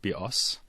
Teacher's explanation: the word bios, with the stress on the second syllable, means bow, as in bow and arrow.